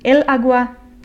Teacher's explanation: the natural emphasis or the natural accent in agua is in the first syllable